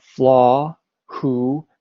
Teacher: So sky is long, right? Flaw, who, because all of these have no consonant at the end.